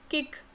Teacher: For example किक, है ना, आप किक बोल रहे हो तो आप थोड़ा स्लोली बोलो किक, तो आप देखोगे कि आपका सॉफ्ट पैलेट जो है आपके माउथ में, वहाँ पे आपकी टंग टच कर रही है, तब ये साउंड क्रिएट हो रही है किक वाली. तो इसीलिए उसको हम कहते हैं वेलर साउंड, क्योंकि वो वेलम से क्रिएट हो रही है.